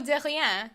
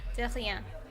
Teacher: catch your tongue in the back of your mouth to make like an R sort of sound